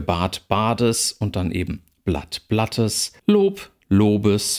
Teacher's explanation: am Ende einer Silbe selbst wenn es eigentlich in Anführungsstrichen ein stimmhafter laut ist verliert er die Stimme